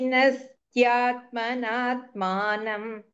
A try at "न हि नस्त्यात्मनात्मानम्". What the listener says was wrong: When you are saying no, you said nahi, instead of nahi nas, you say nahi sas. Maybe during the flow it said like that.